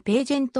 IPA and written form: ˈpæʤənt (pageant)